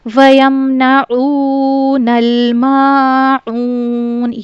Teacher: عین کو ہم نے حلق کے درمیانی حصے سے ادا کرنا ہوتا ہے